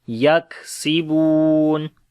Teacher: On the kaf we make hams and shiddat.